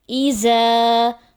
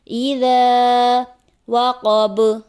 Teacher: ذال کی جگہ زا کی آواز آ جاتی ہے